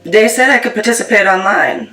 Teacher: using something like a D sound for where you see a written TH, so dat for that. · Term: TH stopping